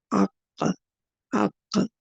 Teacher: زبان کی جڑ اوپر کے نرم تالو سے لگتی ہے، قوے کے قریب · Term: قاف